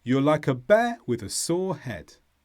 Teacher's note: the stresses here are bear, sore and head